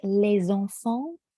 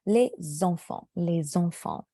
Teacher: the les stops at the word les, and the Z is really in the middle of the two words. So I don't want you to get used to pronouncing Z for an S sound.